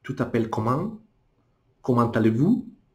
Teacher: O francês, ele já coloca o acento no final.